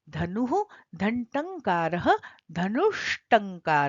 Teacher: विसर्ग की जगह पर मूर्धन्य श हो गया